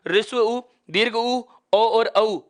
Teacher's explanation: वृत्ताकार वे जिनको बोलते समय होंठ वृत्त की तरह गोल होते प्रतीत होते हैं